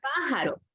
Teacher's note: Última, penúltima, y la fuerza de voz la tiene en antepenúltima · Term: esdrújula